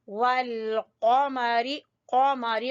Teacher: कौफ को पुर पढ़ेंगे। ठीक है। और जबान की जड़ से अदा होगा।